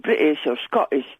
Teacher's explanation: Saying British or Scottish, that is a glottal stop.